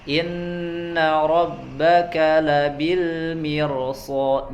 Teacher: ro sukun sebelumnya kasroh tapi dia dibaca tebal karena setelahnya ada huruf isti'la